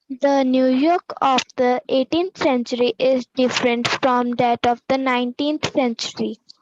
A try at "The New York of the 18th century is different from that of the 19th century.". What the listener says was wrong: Excellent, very good.